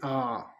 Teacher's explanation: विवर्त स्वर जिन स्वरों के उच्चारण में मुख द्वारा पूरा खुलता है यह विवर्त स्वर कहलाते हैं। जैसे आ अर्धवृत्त स्वर जिन स्वरों के उच्चारण में मुख द्वार आधा खुलता है।